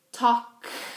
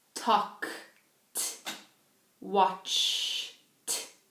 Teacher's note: if you put your hand on your neck and you say talk, your vocal cords do not vibrate. So, if there's no vibration, it's necessary to pronounce the last part, the ed, as a t.